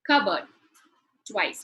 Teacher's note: If you notice in the transcription, the p sound is missing.